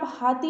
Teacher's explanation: जैसे आप हाथी बोलते हैं तो हा के साथ क्या एक अलग ऊष्मा भी निकलती है। इसी तरह से जब आप हार बोलते हैं तो भी इसके साथ एक ऊष्मा निकलती है। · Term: स्वर यंत्रीय